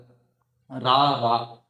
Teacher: மேலண்ணத்தினுடைய முன்பகுதி உரசும் பொழுது ரா இதை இடையின ரகரம் அப்படின்னு சொல்றோம்